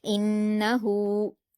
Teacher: نون پر زبر کی حرکت ہے، اس کو جلد پڑھیں گے۔ ہا پر الٹا پیش ہے تو واو مدہ کے جیسے 2 حرکات کھینچیں گے